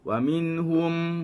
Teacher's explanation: Wa minhum sama juga minhum, keadaan yang sama walaupun tak ada nun, ini mim. Hum kita rapatkan kedua bibir. Awas jangan sampai hilang bibir kita.